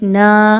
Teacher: الف مدہ، دو حرکات کے برابر کھینچ کے پڑھیں گے